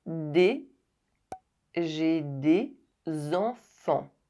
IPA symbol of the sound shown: z